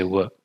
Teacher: there's a very slight touch of the back of the tongue touching the velum when you say w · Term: approximate velar consonant